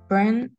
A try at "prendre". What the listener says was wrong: Oui, à chaque fois, si le mot est écrit avec EN, d'accord, EN, on va prononcer on. Ici, pas prendre, prendre. Si está escrito EN, en francés vamos a pronunciar siempre ON, así nasal, on.